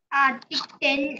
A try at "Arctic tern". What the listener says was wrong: It's not 10. Arctic tern and